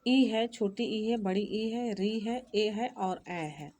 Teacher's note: ये 5 स्वर जो हैं जीभ के अग्र भाग से बोले जाते हैं